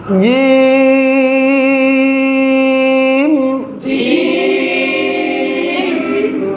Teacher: জিহ্বার মধ্যখান তার বরাবর উপরে তালুর সঙ্গে লাগায় রাখবেন , তারপর সুন্দর করে উচ্চারণ করবেন জিম জিম আবার জিম জোরে